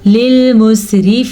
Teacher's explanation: ये रॉ बारीकी से पढ़ी जाएगी क्योंकि इस रा के नीचे ज़ेर है